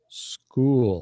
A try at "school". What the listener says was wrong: Try to stretch the vowel sound longer, like I'm doing. School.